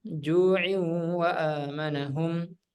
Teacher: Jadi di sini tanwin bertemu dengan waw maka dibaca idgham bi gunnah. Didengungkan 2 harakat.